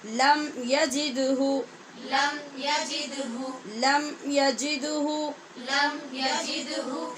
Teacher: دال پہ یہاں قلقلہ ہو رہا ہے اور لم کی میم پہ اظہار شفوی